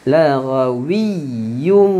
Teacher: Tanwin bertemu dengan mim. Laghawiyyum. Tanwin tadi masuk ke dalam mim.